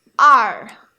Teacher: you have a little R sound at the end